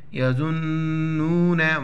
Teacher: ظا ہے نون کے ساتھ اس کو پلس کریں گے اور نون مشدد ہے یہاں پر غنہ کریں گے · وَإِنْهُمْ إِلَّا، الف لام زر، إِلَّا زبر لا، إِلَّا يَظُنُّونَ، زوا ہے، نون کے ساتھ اس کو پلیس کریں گے اور نون مشدد ہے، یہاں پر غنہ کریں گے، ساؤنڈ ان نوز، نون اور نون کو واو کے ساتھ ملائیں گے.